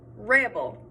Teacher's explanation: i put emphasis on the first part of the word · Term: stress